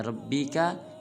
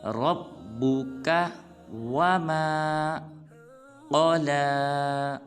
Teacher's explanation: را کو پر ادا کریں گے اور را کو با مشدد کے ساتھ ملائیں گے